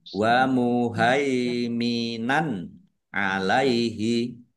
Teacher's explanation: Fathah tanwin bertemu dengan huruf ain, bacaan izhar, dibaca jelas.